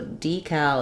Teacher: have um a question about the word uh decal um so in the US um we say this with first syllable stress D Cal and then the second syllable the letter A says